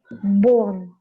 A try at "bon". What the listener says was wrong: O, not bo.